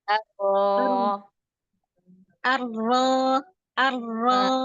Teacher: Hanya ro buka lagi arro. Pangkal lidah naik arro. Tengah lidah cekung. Kemudian suara naik arro.